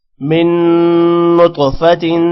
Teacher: من نون پر غنہ ہوگا، تو پر قلقلہ ہوگا، تو موٹا بھی ہوگا